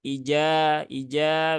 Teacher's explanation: Kalau jim kan tengah lidah, langit-langit atas, ya.